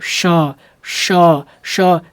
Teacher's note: कैसे इसको बोलना है श अब ऐसे बोलिए श श श जीभ को पीछे ऊपर को थोड़ा तालू की तरफ हल्का सा ले जाइए श आवाज निकालिए श अब देखिए अब कैसे पढ़ना है आप